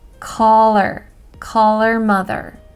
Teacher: Her changes to You basically just drop the H sound and reduce that to just almost like or.